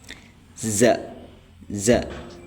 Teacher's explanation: Zai itu tempat keluarnya asnani laswi.